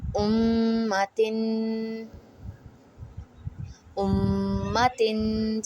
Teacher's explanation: we are applying the Ghunnah on the mim mushaddad